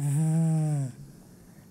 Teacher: that buzzing in your throat is called voicing